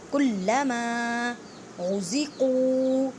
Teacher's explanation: را کو موٹا پڑھیں اور قاف کو ایک الف کی مقدار میں کھینچ کر پڑھیں، واو مدہ کا قاعدہ کریں۔ · لام پہ مضبوطی کریں، لام کو 2 مرتبہ پڑھیں۔